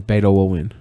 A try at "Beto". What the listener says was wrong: It almost sounds like you're saying beta.